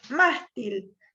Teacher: Mástil es grave porque se acentúa en la penúltima sílaba y tiene la terminación en consonante L, entonces debo ponerle tilde.